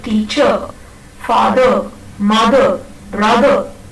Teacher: usually the final R in a word is not pronounced, but it is pronounced only when the next word in continuous speech, when you normally speak, when the next word begins with a vowel sound, then the final R is pronounced.